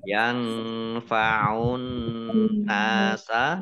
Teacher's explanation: nun tasdid dibaca gunnah atau mendengung, ditahan 2 harokat. Yang fa'un nasa nun fathah alif mat tobi'i panjang 2 harokat.